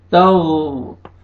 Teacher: गैन को मोटा करके पढ़ेंगे